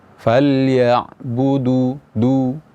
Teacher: Huruf dal itu makhrajnya ada di ujung lidah dengan pangkal gigi seri atas.